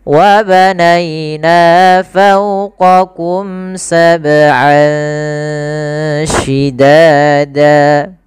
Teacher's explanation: Kemudian lafal an ketemu shin. Ini ada bacaan ikhfa, yaitu kita samarkan suara an ya ke huruf shin. Jadi terdengar seolah-olah dia ada eng gitu ya, tapi bukan ang, tapi dia ikhfa.